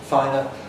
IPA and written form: ˈfaɪnə (finer)